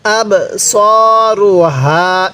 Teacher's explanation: বায়ের মধ্যে আমরা ধাক্কা দিব, কারণ বাটা হলো কলকলার হরফ